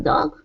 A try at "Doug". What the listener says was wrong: No, that's dog. is the schwa sound. Dog is an ah.